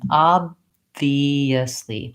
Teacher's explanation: That's a stopped B. Basically, I close my lips to stop the air, and then when I open back up and release, I have my lower lip and upper teeth connecting.